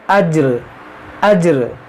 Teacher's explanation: یہاں پر وقف کریں گے ہم تو اس دو زیر کو ساکن کر دیں گے۔ اب یہاں دیکھیں جب یہ را ساکن ہوگا اور جیم پہلے ساکن ہے تو کیسے پڑھیں گے؟